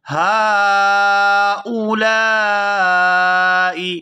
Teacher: یہاں ہا پر کھڑی زبر بھی ہے اور مد بھی ہے، تو اس کو 4 سے 5 الف کے برابر کھینچ کر ادا کیا جائے گا